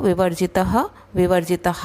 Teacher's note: त के बाद जो विसर्ग है उसको हम तहा भी बोल सकते हैं, तह भी बोल सकते हैं